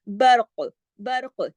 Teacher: برق ہلا کے پڑھنا ہے، موٹا بھی پڑھنا ہے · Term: کلکلہ